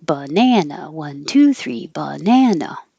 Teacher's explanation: very american use of uh in the unstressed syllables that get shorter so the ba and the should be short and then gets